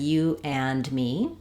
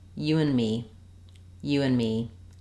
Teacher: the n Sound links the two words together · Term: reduced and